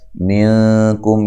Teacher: یہاں نون ساکن کا اخفا ہے مع الغنہ باریک اخفا ہے ، کم کاف کو باریک پڑھنا ہے اور یہاں میم ساکن